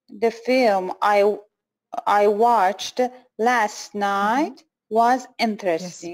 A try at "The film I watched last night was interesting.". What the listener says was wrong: Yes, very good.